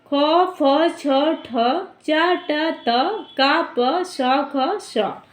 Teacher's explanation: खर प्रत्याहार के अंतर्गत आने वाले वर्णों का जो है विवार, श्वास और अघोष होता है।